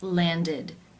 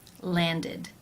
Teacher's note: the ending is pronounced with the e as in sit vowel and the d sound